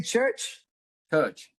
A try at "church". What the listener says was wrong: R. I need to hear the R.